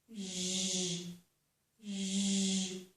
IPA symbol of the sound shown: ʒ